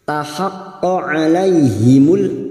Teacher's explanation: fathah bertemu ya sukun kita lunakkan huruf layin. Alaihimul masuk pada idhar qamariyah lam ta'rif yang bersukun.